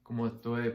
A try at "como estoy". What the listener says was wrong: I like that too. Really nice.